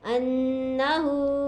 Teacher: हमज़ा को नून मुशद्दद से मिलाएंगे, गुन्ना करेंगे